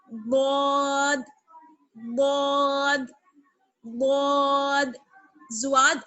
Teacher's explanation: زواد نہیں پڑھنا ہے آپ کو، واو کی آواز بالکل نہیں آنی چاہیے · سیدھی طرف کی کروٹ اور سیدھی طرف کے اوپر کی داڑوں کی جڑ